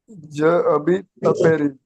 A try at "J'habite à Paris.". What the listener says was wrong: No ja. Remember, this is not a hard J, it's a soft J. J'habite à Paris.